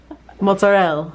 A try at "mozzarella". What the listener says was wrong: You can put the A on the end.